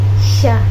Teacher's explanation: dibentuk dengan menempelkan depan lidah pada langit-langit keras, tetapi udara dapat melewati samping lidah dan menimbulkan bunyi desif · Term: konsonan frikatif palatal tak bersuara